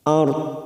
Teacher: hati-hati ro sukun ini kita baca tafkim karena sebelumnya ada harokat fathah